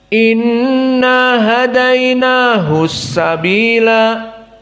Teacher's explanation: dikarenakan bertemu as-sabila dan as-sabila maujud alif wal lam iltaqa baina sakinain, maka akhirnya tidak dibaca dengan mad.